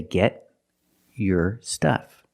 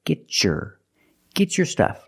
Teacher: If I separate, I can say get your stuff. But because I have a T before a Y making the Y sound, I can change the T to a ch sound like chicken and say get your stuff.